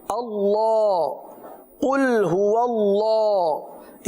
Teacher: इसकी खूबसूरती इसकी अदायगी उसी वक्त मुमकिन है कि जब हम अल्लाह अजज वजला के लाम को पूरा अदा करें यानी मोटा अदा करें